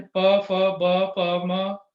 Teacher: ਔਰ ਅਖੀਰਲੀ ਲਾਈਨ ਪ, ਫ, ਬ, ਪ, ਮ, ਜੀਭ ਕਿਤੇ ਟੱਚ ਨਹੀਂ ਕਰਦੀ, ਇਹ ਅਸੀਂ ਬੁੱਲਾਂ ਨਾਲ ਇਹ ਲਾਈਨ ਬੋਲਦੇ ਹਾਂ